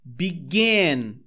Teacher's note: O gan é a parte mais forte da pronúncia.